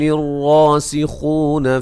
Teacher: لا مد اصلی ہے، را کو موٹا ادا کریں گے، را کے اوپر زبر ہے